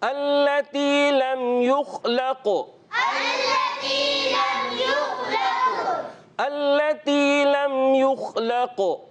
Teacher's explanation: خا کے اندر قلقلہ نہیں ہوگا, قاف کے اندر قلقلہ کریں گے